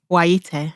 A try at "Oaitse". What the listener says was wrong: So TSE at the end. Okay, so think as if you want to say Waitrose, is that Y and then tse at the end.